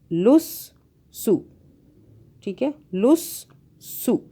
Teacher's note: سین کی دو بازیں بن رہی ہیں کیونکہ اس کے اوپر تشدید ہے، اس کی وجہ سے لس سو، ٹھیک ہے، لس سو، سین پیش سو، دو بازیں ہو گئی۔